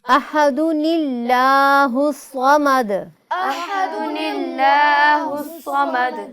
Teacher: احد اللہ الصمد کو نون قطنی سے پڑھتے وقت احدو کی دال پر پیش بھی پڑھی جائے گی، اس کی دال کو ہم نے ساکن نہیں کرنا ہے